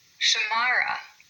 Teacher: we have three syllables there, and we emphasize the second one